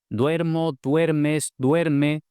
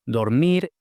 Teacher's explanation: Tenemos el diptongo we cuando el acento va en esa sílaba y la vocal o cuando el acento va en otra sílaba.